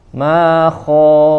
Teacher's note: Min syarri ma khalaq. Kha, huruf kha ya, sempurnakan di bagian tenggorokan, ya adna yang paling dekat ya dengan mulut kita, yaitu atau bagian atas ya kalau dari tenggorokannya.